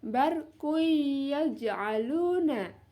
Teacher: dhammah tanwin ya dimasukkan ke dalam huruf ya. Di situ ada tanwin berupa dhammah tanwin bertemu dengan huruf ya.